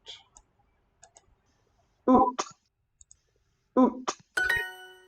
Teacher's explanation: the apostrophe is a glottal stop, as in uh-oh